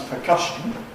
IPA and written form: pəˈkʌʃn̩ (percussion)